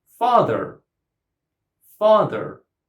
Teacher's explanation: Stress goes on the first syllable.